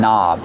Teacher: The word knob has a silent K on it. Don't pronounce the K. Start with the N sound.